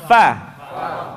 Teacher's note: ujung gigi seri nyentuh dengan bibir bawah bagian dalam Va bibir atas jangan ikut campur Turun ke bawah Pak Nah